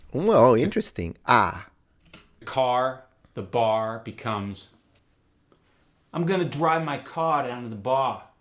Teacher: The R sound goes to ah.